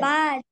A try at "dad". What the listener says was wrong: Oh, it starts with D sound.